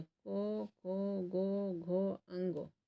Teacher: कंठ्य जिसका कंठ से उच्चारण होता है। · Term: कंठ्य व्यंजन